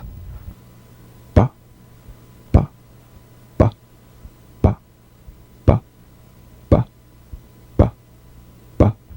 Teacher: the springing away from contact not by pressing the lips together you'll feel a gentle voiced pulsation on the lips like a delicate crisp tap